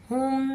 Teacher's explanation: हा को सीना की तरफ से अदा करेंगे।